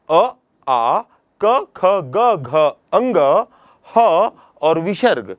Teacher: इतने वर्णों का जब हम उच्चारण करते हैं तो जब वायु बाहर आता है तो कंठ में दबाव पड़ता है। इसलिए इन वर्णों को कंठ्य वर्ण कहते हैं।